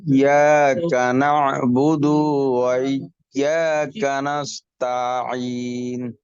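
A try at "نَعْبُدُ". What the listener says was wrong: আপনারও দু টান হয়ে গেছে, না বুদু।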